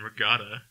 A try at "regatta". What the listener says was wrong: There's no O in regatta. Regatta. regatta.